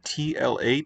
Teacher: that's a single laterally released t that's aspirated